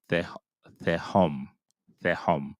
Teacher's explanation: Some people would say te home, and they would pronounce the T sound, the hard sound for the tau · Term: TH sound